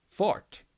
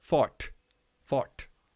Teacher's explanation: You don't pronounce the R and the T hard. They kind of mesh together and make the sound that goes like almost like a Street Fighter punch.